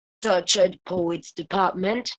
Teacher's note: there's a period of voicelessness between the release of the plosive and the beginning of voicing for the next sound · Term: aspiration